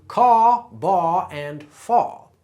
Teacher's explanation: for someone who speaks with a traditional southern drawl, that would be caw, baw, and faw, non-rhotic. And yes, as you can hear, the drawl is typically a bit slower.